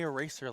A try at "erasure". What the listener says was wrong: Erasure. Erasure. No, not eraser. Like erasure, like with a U. Essentially, like, I'll just erasure. Erasure.